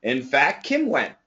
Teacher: Probably the t will disappear and we're just going to hear a big k sound.